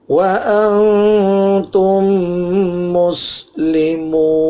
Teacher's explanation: ada mim mati ketemu mim dibantu dengan tasdid di sini, namanya idgham mislen.